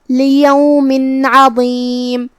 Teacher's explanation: حرف العین کو ہم حلق کے درمیان والے حصے سے ادا کریں گے۔ آخری میں میم پہ روکیں گے تو اس پہ جزم سے روکیں گے تو میم کو ہم ظاہر کریں گے۔